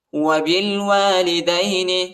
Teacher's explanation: با کو لام کے ساتھ ملائیں گے، الف نہیں پڑھا جاتا